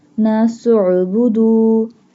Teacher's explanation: Join the scene with ayn because ayn has jazm. Sound of ayn is a and ayn pronounced from the middle part of throat.